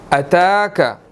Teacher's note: اتاک، تا کے اوپر کھڑی زبر ہے، 1 سیکنڈ ہم اس کو کھینچ کر پڑھیں گے